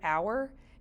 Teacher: like h is a consonant but when you say the word hour it sounds like you're starting with a vowel it's a vowel sound so you would still use the article